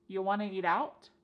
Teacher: we have reduced want to to become wanna to. This is a common reduction in English.